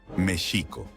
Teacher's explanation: procurar acentuar todas las palabras que estén en lengua nahuatl con la acentuación en la penúltima sílaba